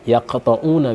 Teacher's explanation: Kof, huruf qalqalahnya itu. Jadi kalau ada kof di tengah kalimat yaqta'una misalnya dipantulkan karena kopnya huruf qalqalah.